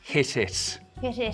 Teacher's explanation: It's a T sound made with a very soft closure at the tip of the tongue. Or not even really quite a full closure at all. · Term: Irish slit T